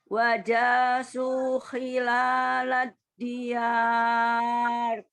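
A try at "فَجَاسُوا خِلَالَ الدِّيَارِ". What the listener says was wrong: Ini bagus, tapi depannya bukan wow. Fa.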